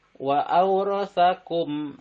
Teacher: idhar itu jelas, safawi di antara dua bibir tanpa mendengung. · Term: idhar safawi